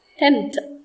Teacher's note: th sound is dental sound. Th is a dental consonant.